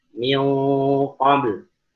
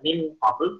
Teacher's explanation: Di situ tidak ada sama sekali apa namanya makhraj nun secara jelas, tapi sifatnya masih ada, itu sifat guna. Kita nggak bacakan min qabl, kalau kita baca min qabl maka ia izhar. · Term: ikhfa hakiki